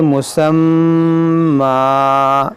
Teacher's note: ہم اس دو زبر کو الف سے بدل دیں گے، اس کو پڑھیں گے مسمى.